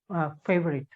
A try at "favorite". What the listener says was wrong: Now, when you're consciously doing it, then it's okay. But when it's in flow, then the f sound becomes the p sound. The p of Hindi. But in English, it's the f.